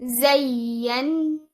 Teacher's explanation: After giving nabr, after raising your voice on ya, you join it with noon mushaddad, giving it the most complete level of gunna, which is akmal gunna. Zayyanna. Now you see over here, the noon is having an alif mad after it, which means that you give two counts over here.